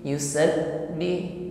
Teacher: Yusabbi tertahan ya, suaranya putus dikarenakan makhrajnya tertutup dengan sempurna. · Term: sifat syiddah